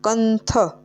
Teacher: હવે આ જે થ છે એ આ નની લાઈનમાં આવે છે, એટલે આપણે એનો કંથ એટલે આપણે ન ઉચ્ચાર કરીએ છીએ અનુસ્વરનો